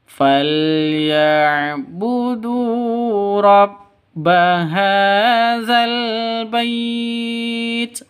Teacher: Falyabudu panjang dua ketukan karena ada waw mati diawali dengan dhamma. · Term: mad tabi'i